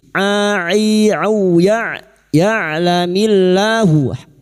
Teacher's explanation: huruf ain wastul halqi atau tengah tenggorokan